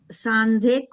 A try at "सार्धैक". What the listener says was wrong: सार्धैक, दीदी इसमें अनुस्वार नहीं है, वो तपने में ऐसा लग रहा है, सार्धैक वर्षा।